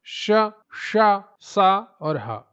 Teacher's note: संख्या इनकी होती है चार। इनके उच्चारण में मुख से गर्म हवा, ऊष्मा निकलती है। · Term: ऊष्म या संघर्षी व्यंजन